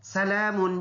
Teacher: لام کے اوپر کڑی زبر ہے, ایک الف کے اندازے سے اس کو ہم نے لمبا ادا کرنا ہے